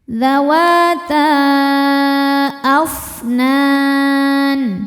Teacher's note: Mad tobi'inya alif didahului fathah terdapat pada kata zawata dan hamzahnya ab terdapat pada kata afnan. Maka taknya panjang, boleh 4 boleh 5 harokat. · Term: mad jaiz munfasil